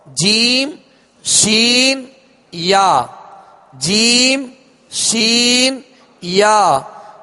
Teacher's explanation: جیم کا مخارج کی لسٹ میں آپ دیکھ لیجئے، زبان کے درمیان اور تالو کے درمیان سے جیم ادا ہوتا ہے، اور اس مخرج سے یعنی اس جگہ سے 3 حروف ادا ہوتے ہیں، جیم شین یا، جیم شین یا. یہ درمیان زبان یعنی بیچ زبان اور بیچ تالو، اوپر کا بیچ تالو، اس سے ادا ہوتے ہیں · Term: حروف شجریہ